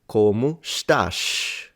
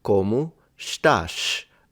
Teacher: It's not even a retracted S at the end as I was expecting. This is a full-on sh sound, like this SH in English, I want to say.